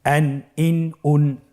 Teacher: আপনারা দেখতে পাচ্ছেন যে প্রত্যেকটি উচ্চারণের শেষে দন্ত ন উচ্চারিত হচ্ছে